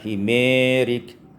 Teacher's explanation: himarika, imalatu fathul mim wal alif, sehingga kita baca dengan imalah ya, sehingga baca himerik.